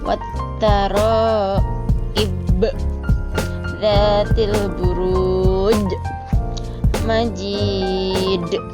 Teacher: harus menekan huruf Qalqalah tersebut dengan lebih kuat sehingga pantulannya lebih kuat daripada membaca Qolqolah Sugro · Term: qolqolah kubro